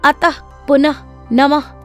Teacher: विसर्ग, इसका उच्चारण हल्के से अह की भांति होता है।